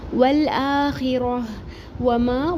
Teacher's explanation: واو کے اوپر سنگل حرکت، ما الف مدہ ایک الف برابر پڑھیں گے · اگر ہم یہاں پہ رکیں گے تو ہم تا کو ہاں میں بدل کے ساکن کر دیں گے.